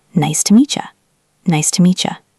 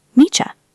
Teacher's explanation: When a t sound meets a y sound like meet you, they mix together and become cha. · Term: connected speech